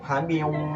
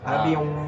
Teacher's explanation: Jadi cara bacanya itu habing kita rasakan dengungnya habiung. Bergetar di hidungnya. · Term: idgham biguna